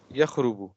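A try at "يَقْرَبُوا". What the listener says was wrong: نہیں نہیں نہیں، یقربو، قاف قاف، یقربو قریب ہونا نا، قاف قاف، یقربو.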